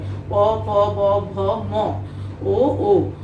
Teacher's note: অর্থাৎ এই বর্ণগুলো উচ্চারণের সময় কোনো না কোনোভাবে দুই ওষ্ঠের ব্যবহার হয়, দুই ওষ্ঠের সাথে, অর্থাৎ একটা ওষ্ঠ আরেকটা ওষ্ঠের সাথে স্পর্শ হয় বা ব্যবহৃত হয় বলে এই বর্ণগুলোকে ওষ্ঠবর্ণ বলে